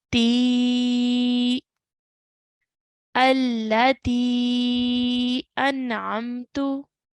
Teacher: Okay, so we're going to pronounce this as, so the ta is there with the kasra, so ti sound, but now we're going to stretch the ti sound for 3 to 5 counts because of the Madd Saghir